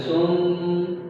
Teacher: سم سواد پر پیش ہے، سواد میم ساتھ مل رہا ہے، یہاں پر گنہ بھی کرے سم. ٹھیک ہے، اب میم کے اوپر تشدید بھی ہے اور 2 پیش بھی ہیں.